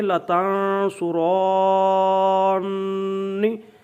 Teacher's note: یہ پڑھیں گے تنصرانی، تو یہ پڑھیں گے لتنصرانی، یعنی غنہ کریں گے اور ساتھ ملائیں گے · اس طرح تنصرانی، یہ جو ہے نا تنصرانی، یہ جو لفظ ہے اس کا نون اعرابی تھا تنصرانی، تو یہ نون جو اعرابی گر جائے گا، اب نون مشدد آئے گا، اور یہاں پر دراز بھی کریں گے، غنہ بھی کریں گے اور زیر بھی پڑھیں گے، کیونکہ اس سے پہلے الف ہے، نون اعرابی گر گیا، شروع میں لام تاکید بھی لائیں گے۔